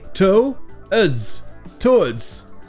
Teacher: c'est qu'en fait, le W ici est muet